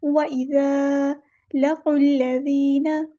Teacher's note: قاف کو ہم نے لام کے ساتھ ملا دینا ہے، قاف ہیوی لیٹر ہے، قاف کو پور پڑھنا ہے